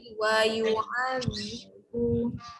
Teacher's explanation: huruf zal lidah keluar